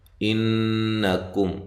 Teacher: انکم نون مشدد پہ غنہ ضروری ہے، حمزہ کو تحقیق سے، کاف کو باریک، میم ساکنہ کا اظہار.